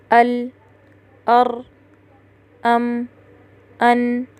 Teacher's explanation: استعلاء کے بالمقابل آنے والی صفت ہے استفال، یعنی نیچے رہنا، یعنی حرف کو ادا کرتے وقت زبان کی جڑ یعنی اقصی لسان اوپر تالو کی طرف نہیں اٹھتی، جس کی وجہ سے حرف باریک ادا ہوتا ہے۔